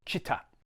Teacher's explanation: there's a tendency to lengthen the I and say Chita, but you want to keep them the same length. Chita.